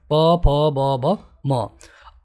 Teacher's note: ओष्ठ, यानी कि आपके दोनों होठों से ये आवाज़ आती है, प, फ, ब, भ, म।